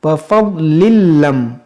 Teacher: ये तनवीन के बाद लाम है, यहाँ पर इदगाम करेंगे